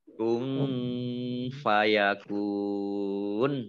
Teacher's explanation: nun sukun bertemu dengan huruf fa, bacaan ikhfa dibaca samar-samar. Kemudian kaf domah wawu sukun mat tobi'i tetapi karena bertemu dengan huruf terakhir yang dibaca sukun maka menjadi mat arif lis sukun ya.